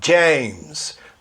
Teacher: DJ é a pronúncia sempre do J no começo da palavra